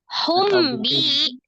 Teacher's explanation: merubah nun sukun menjadi mim sukun disertai dengan gunnah. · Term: iklab